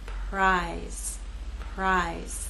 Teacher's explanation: r will begin without vibration and then you'll add your voice as we move into I